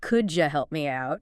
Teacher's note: Sometimes sounds blend together like the D and Y and could you making a J sound?